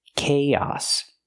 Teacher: Use the k k sound like cake plus the long A, kay, and then the ah sound like hot and stop, chaos. We link the two vowels with the ee sound like yes and yesterday.